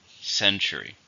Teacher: how many syllables in century three stress in the first